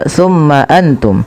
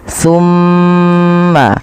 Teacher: Yang pertama, kita harus perhatikan pada lafal mim berharakat tasydid. Ketika mim itu berharakat tasydid, wajib ditahan suara gunnahnya.